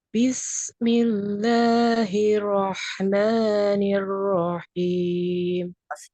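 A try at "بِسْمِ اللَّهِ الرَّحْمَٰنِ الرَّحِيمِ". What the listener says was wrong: Sukunkan dulu ro-nya. Hirro. Habisnya kurang malir. Bismi. Jangan sampai ada yang terputus gini. Bismil. Nah, itu kan ada yang terputus. Ya, jadi napasnya nempel nyambung, ya, suaranya nempel nyambung rokhwah. Ya, rokhawah itu mengalir terus, ya bunyinya nggak ada yang terputus.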